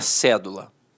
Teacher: a palavra cédula notoriamente é uma proparoxítona. A sílaba tônica está na antipenúltima sílaba.